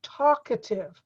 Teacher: the A in the middle is not stressed. You barely hear the A in the middle.